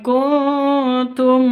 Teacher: Nun mati bertemu dengan Kaf samar didengungkan ikhfa Hakiki